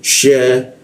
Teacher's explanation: Sya itu posisinya di tengah lidah dia. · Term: huruf sya